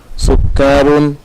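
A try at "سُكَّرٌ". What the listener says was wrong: Sukarun atau sukarun? Sukarun pendek. Kafnya pendek kan.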